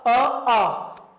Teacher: ये दोनों स्वर कंठ से बोले जाते हैं